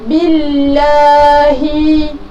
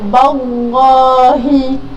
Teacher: ba berbaris bawah, jadi bacaan kita harus nipis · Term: bacaan nipis